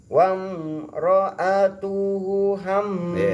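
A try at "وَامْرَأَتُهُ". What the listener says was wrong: Hanya hu-nya panjangin dulu.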